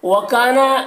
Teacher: وَكَانَ میں الف مدہ ہے، ایک الف کے برابر کھینچیں گے